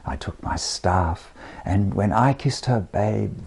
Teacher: It should be iambic pentameter, that's how it's written, but I've turned it into dactylic tetrameter, somewhat capriciously, to make every line masculine, every masculine line ending a but with the accented first syllable of the next line, so it behaves like a caesura.